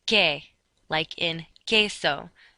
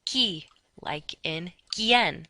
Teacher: QUE has no W sound. And just like GUI, QUI has no W sound.